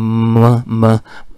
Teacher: इधर से जो हवा आ रही होती है वो नेज़ल कैविटी से निकलती है, ना कि वो ओरल कैविटी से निकलती है। इस वजह से जो इस तरह जो साउंड प्रोड्यूस होते हैं उन्हें हम ये कहते हैं, ठीक है, नेज़ल्स। · इसमें तो माउथ भी क्लोज हो गया, लेकिन ये वीलम जो है सॉफ्ट पैलेट ये आगे हो जाता है। अब इसकी वजह से इधर से जो हवा आ रही होती है वो नेज़ल कैविटी से निकलती है, ना कि वो ओरल कैविटी से निकलती है। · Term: नेज़ल साउंड